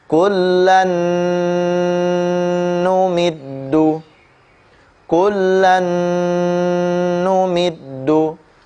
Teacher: bunyi lan diidghamkan ke huruf nun ya dengan tempo gunnah yang dipanjangkan